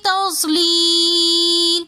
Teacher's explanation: یا مدہ کے بعد آگے لام ساکن آ رہا ہے تو اس لیے ہم نے اس کو تھوڑا سا زیادہ کھینچ کر پڑھا